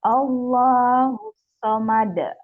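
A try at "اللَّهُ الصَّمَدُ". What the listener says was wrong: tasdid. Ini ada tasdid ya. Allahus somad. Jadi dialirkan ya, bunyi sodanya ini ngalir. Allahus somad.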